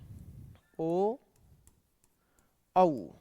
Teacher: ओ और औ का उच्चारण करते समय कंठ और ओष्ठ होठ दोनों का उपयोग किया जाता है, इसलिए ओ और औ का उच्चारण स्थान कंठ ओष्ठ माना गया है।